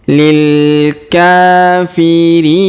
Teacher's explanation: Huruf K kita panjangkan 2 harokat karena alif kecil di atasnya.